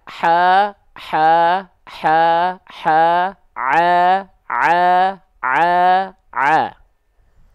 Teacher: Jadi hak kecil itu dilafalkan tepat dari bagian tengah tenggorokan, nafasnya.